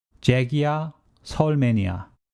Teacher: the 받침 기역 or 받침 니은 is followed by 이응 at 이. Continuous sounding rule applies here and it is pronounced as 잭이야 or 서울맨이야 in normal speed.